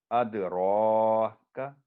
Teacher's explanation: را موٹی آواز میں پر کر کے، کا باریک آواز میں · یہاں کلکلا ہوگا دال پر